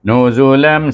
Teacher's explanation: Nuzu, tanwin bertemu dengan mim, dibaca dengan idgham ma'al gunnah. Ingat, huruf mim adalah huruf idgham. · Lam, lam lebih kepada mim, ya, tetapi mim dia rapat, nampak bibir rapat tapi ada jarak selai kertas. Sebab tu sebab dia bunyi balik mim.